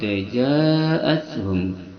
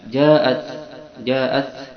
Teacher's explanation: Lalu kita lanjutkan faka'annama qatalan nasa jami'a wa man ahyaha faka'annama ahyan nasa jami'a wa laqad ja'athum. Ja'at ini ta itu ada hamsun, ada hembusan nafas ketika kita bacanya. Ja'at itu ada hembusan nafas.